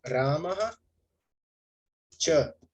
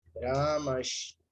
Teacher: a minha visarga vai se transformar na sibilante palatal